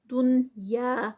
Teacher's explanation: یا پہ جو ہے وہ الف مدہ ہے، 2 کاؤنٹس ہے